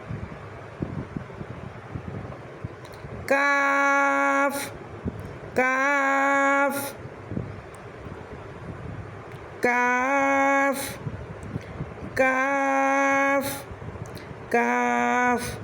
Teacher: کاف ادا ہوتا ہے جب زبان کی جڑ تالو کے سخت حصے سے لگے تو حرف کاف ادا ہوتا ہے۔ کاف کاف کاف کاف کاف۔